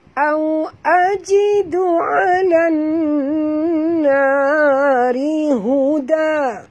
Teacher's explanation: Ha, kalau kita baca berhenti memang tebal, kena mengikut baris nun ini. Tapi bila kita baca terus, ra' ini kekal dengan baris bawahnya, maka dia menjadi ra' tarqiq, ra' tipis.